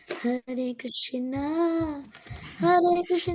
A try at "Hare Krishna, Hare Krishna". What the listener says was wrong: No, not singing, but chanting.